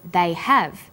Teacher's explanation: stressed the auxiliary verb have